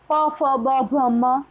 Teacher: દાંત છે ઓષ્ઠ્ય છે. તો આપણા કેટલાક વર્ણો એવા છે પ ફ બ ભ મ તો એ ઓષ્ઠ્ય વર્ણો છે.